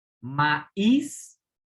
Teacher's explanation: maíz es aguda porque tiene la tónica en la última sílaba, pero fíjate, no termina en N, S o vocal.